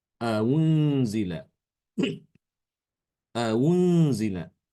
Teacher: Jadi baca antara hamzah dhammah dengan wawu dhammah. Antara u dengan wu.